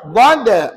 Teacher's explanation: suatu makhraj yang memanjang lantaran sepanjang tepi lidah, kiri atau kanan, ditekan ke gigi gerham atas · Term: sifat istitalah